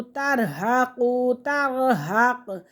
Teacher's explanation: یہ موٹا قاف ہے تو اس کو کاف نہیں پڑھیں گے